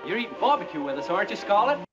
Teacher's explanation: 근데 aren't you 올리지 않고 aren't you 내려서 발음합니다. 자, 부가음문은 올려 발음하면 실제 물어보는 것이 될 수 있겠지만 내려서 억양을 falling intonation을 하게 되면 확신을 가지고 얘기하는 거예요.